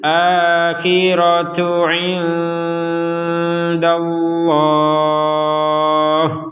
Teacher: kalau melanjutkan kepada potongan ayat berikutnya maka kembali menjadi huruf ta sebagaimana semula